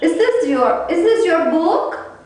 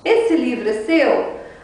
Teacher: My voice is going up. A minha voz sobe um pouquinho no final.